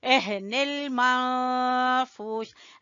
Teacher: ہا یہ والی جو ہے یہ اقصا حلق سے یعنی سینے کے قریب سے نکلتی ہے